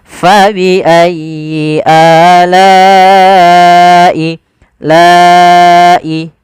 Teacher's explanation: Maka la-nya awalnya 2 harokat karena bertemu hamzah, maka dia wajib kita panjangkan untuk riwayat Imam Hafiz an Asim dari jalur Imam Syatibi, yaitu sepanjang 4 atau 5 harokat